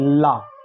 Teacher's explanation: तो हिंदी वर्णमाला में ला को पार्श्विक व्यंजन कहते हैं क्योंकि ला में पूरी तरीके से पार्श्व माने छत पर जीभ पूरी तरीके से लगा के बोला जाता है